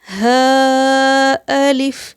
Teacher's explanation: حلق کے نیچے والے حصے سے اسے ادا کرنا ہے